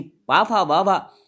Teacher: पवर्ग का उच्चारण स्थान होता है ओष्ठ, क्योंकि पाफा बाभा मोड़ते समय हमारे ओंठ जुड़ जाते हैं, इसलिए इनका उच्चारण स्थान पवर्ग माना जाता है।